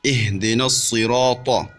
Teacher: تو ہم طا کو لمبا بھی نہیں کریں گے اور ہم طا کو موٹا بھی پڑھیں گے کیونکہ یہ حروف مستعلیہ میں سے ہے، موٹے حروف میں سے ہے۔